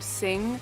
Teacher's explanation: that last sound that you make with n g actually raises the soft palate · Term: ng sound